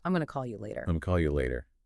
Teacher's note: The pacing there is incredibly fast. Like going to just blends right into gonna.